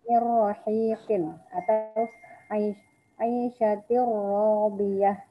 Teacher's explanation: bertemu dengan ro dan lam, tidak ada dengung, langsung dilebur, jadi langsung ke huruf setelahnya